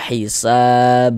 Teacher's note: Nah, dan ini dia masuk kepada qalqalah kubra, qalqalah besar. Karena kita berwakaf, kita berhenti di huruf qalqalah ini, maka menjadi qalqalah kubra. Maka kita baca hisab.